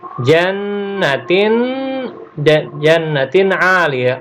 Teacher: Makharijul huruf a berasal dari tenggorokan. Dia adalah huruf izhar, kita tidak mungkin membacanya secara samar-samar, apalagi dimasukkan.